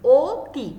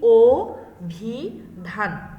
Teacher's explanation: কিন্তু সংবৃত অ আমরা বানান করছি স্বরে অ দিয়ে, কিন্তু উচ্চারণ করছি ও দিয়ে।